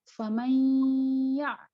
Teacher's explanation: Kalau bi gunnah dengan gunnah, jadi dipanjangkan 2 harokat